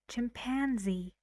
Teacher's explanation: How many syllables? 3 again. And the stress is on pan.